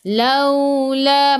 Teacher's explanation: Laula, masuk ke dalam waw, waw ada sukun. Waw sebelumnya baris atas kena baca lembut, bacaan lin.